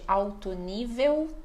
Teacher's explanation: nós aqui falamos de alto nível, tudo com som de U